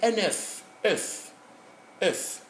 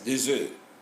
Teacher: The last consonant F is heard in the singular, but in the plural, it disappears